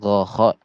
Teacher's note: Jadi gho dan kho ini di ujung tenggorokan.